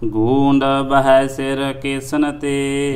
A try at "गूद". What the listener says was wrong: गूंद आगे बिंदी लगी तो टिप्पी गूंद नहीं गूद पाठ ही आउंदा वा हाँ गूंद नहीं है गूद हुंदी चरबी निकलदी मिझ निकलदी उहनूं गूद कहंदे ने इहनूं सोध कर लो पाठ नूं गूद बह सिर केसन ते जो सिर वजदा ना उहदे च शस्त्र वजदा सिर फुट जांदा ते चरबी निकलदी उहनूं गूद कहंदे ने गूद।